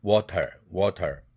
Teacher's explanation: 혀끝이 입천장을 탁 치고 나오는 소리다. 여러분들 미국 영어에서 주로 가장 흔히 발견되는 것으로서 영국 영어에서는 그 발견되지 않습니다. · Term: 설탄음